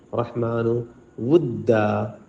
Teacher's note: ہا پہ حلق پہ زور دیں